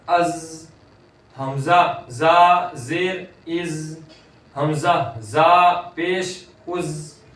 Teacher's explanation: اب یہ زا ہے، اس کے اندر آواز جاری رہے گی